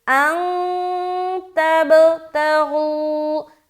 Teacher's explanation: تب قلقلہ، کیونکہ با کے اوپر کیا ہے؟ سکون ہے